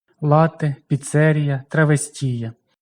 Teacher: італійський переважно на другому складі від кінця